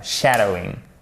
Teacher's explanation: Donc, c'est pas un shadowing, c'est un shadowing. On marque l'accent sur la première syllabe.